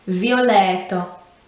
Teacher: the t is not a harsh t sound it's verging on a d sound violetto you see how it's very very gentle on the tongue